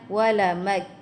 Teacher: semua pendek dan ada angin hamas ya pada huruf akhir dia